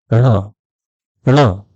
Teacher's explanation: मूर्धन्य ध्वनियों में ट वर्ग के अनुनासिक के बारे में बात की हम उसे न भी बोलते हैं जबकि उसका सही उच्चारण है ण